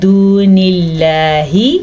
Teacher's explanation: لفظ اللہ کو باریک پڑھنا ہے، پر نہیں پڑھنا، کیونکہ لفظ اللہ سے پیچھے حرف کے نیچے زیر ہے.